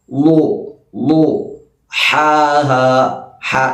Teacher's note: ളാദിന്റെ മഹ്റജ് നാവിന്റെ അരികുഭാഗം സൈഡ് ഭാഗം മേലെ അണപ്പല്ല് ആ അണപ്പല്ലിൽ മുട്ടിക്കാം